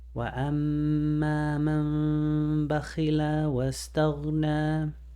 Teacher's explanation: you're gonna hold on to the meme sound. You're not gonna pronounce the noon. You're gonna leave that little space between your lips. You're getting ready to pronounce the letter ba. · So the noon turns into a meme, and that's why there's a little meme indication right there.